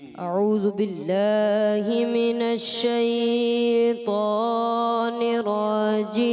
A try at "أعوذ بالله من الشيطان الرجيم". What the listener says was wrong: اچھا ذال کی ادائیگی میں تھوڑا سا خیال رکھنا ہے، ذال اعوذ ذو ہو جائے، ٹھیک ہے.